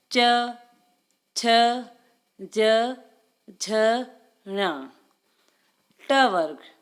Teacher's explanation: च वर्ग में जीभ और तालुओं का प्रयोग किया जाता है।